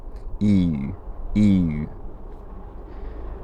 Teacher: rounded e vowel another way to think about it is that it's just e but your lips get more rounded as you say it